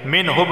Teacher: منہب، یہاں پر کیا ہوگا؟ قلقلہ ہوگا کیونکہ با حروف قلقلہ میں سے ہے تو آواز مخرج سے ٹکرائے گی